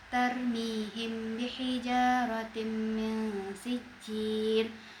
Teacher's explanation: Huruf mim sukun bertemu dengan ba hukum tujuhnya adalah ikhfa syafawi. Maka dibaca samar antara huruf mim dan huruf ba. Lalu bagian bihijaratim huruf ja terdapat mad thbi'i alif maka dibaca panjang dua harakat. · Maka dibaca dengan dengung sampai dua harakat. · Lalu bagian bihijaratim huruf ja terdapat mad thbi'i alif maka dibaca panjang dua harakat. Lalu pada huruf ta berharakat kasratain bertemu huruf mim yaitu huruf idgham bikhunah.